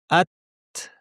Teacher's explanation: তা উচ্চারণের সময় জিহ্বার পেছনটা যেহেতু নিচু থাকে এজন্য আওয়াজটা উপর দিকে যায় না পাতলা আওয়াজ হয় এবং তা এর শেষে একটা বাতাস আছে